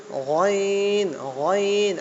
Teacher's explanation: গলার একটু নিচে থেকে হবে, কণ্ঠলাইনের মাঝখান থেকে হবে গইন